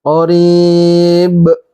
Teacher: Qarib, qarib ini mad alat li sukun karena ada mad tabi'i berupa kasrah bertemu dengan ya sukun, kemudian di sini bertemu dengan ba-nya disukunkan. Ba terakhir di sini ada lagi hukumnya hukum qalqalah kubro karena huruf qalqalah ba-nya ini berharokat hidup. Qarib dipantulkan, mad alat li sukun dan qalqalah.